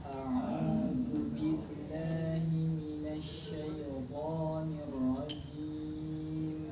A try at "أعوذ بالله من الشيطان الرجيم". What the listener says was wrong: Nah, roknya tambahkan lagi. Minasyaitonir rajim.